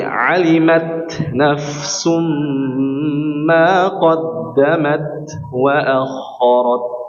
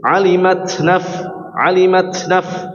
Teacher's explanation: diberikan kelonggaran untuk memberikan sifat hames pada huruf ta